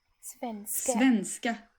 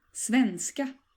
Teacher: the rhythm of the word here, as in many cases in Swedish, is that you stress both parts of the word.